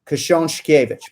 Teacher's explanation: it's very natural for us to have the double sh sound in there